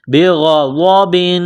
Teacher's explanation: فباءوا بغضب، غین اور ضاد کو موٹا کرنا ہے